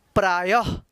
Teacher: और यहाँ पे देखिए य, और य में जो है आह की मात्रा है, तो य के बाद हम ह उच्चारण करेंगे